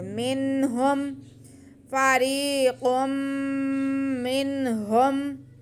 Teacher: ہا حروف حلقی میں سے ہے تو یہاں پہ اظہار کا قاعدہ ہوگا، یعنی کہ ہم نون کو اور ہا کو علیحدہ علیحدہ واضح کر کے پڑھیں گے